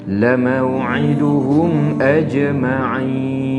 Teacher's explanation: hukumnya mad arid disukun, kena baca 4 ataupun 5 harakat